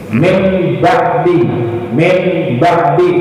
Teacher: Hilangkan bunyi nun mati diganti dengan bunyi mim. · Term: iqlab